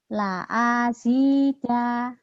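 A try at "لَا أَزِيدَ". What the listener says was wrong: La azida. A-nya pendek. La azida gitu.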